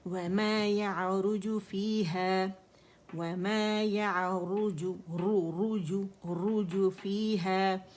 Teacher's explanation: را موٹی ہے، پیش کے ساتھ ہے